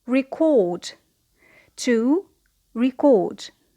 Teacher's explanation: So here the stress is on the second syllable because it is a verb.